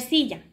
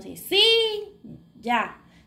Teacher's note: donde hacemos más el esfuerzo de voz es en sí Entonces está la sílaba tónica